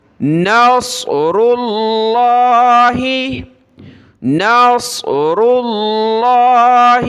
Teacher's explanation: صاد کو موٹا کرنا ہے، را کو اور لفظ اللہ کو موٹا کر کے پڑھنا ہے، پر کر کے پڑھنا ہے۔